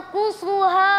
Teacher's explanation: Nun sukun bertemu huruf qaf dibaca samar. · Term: ikhfa hakiki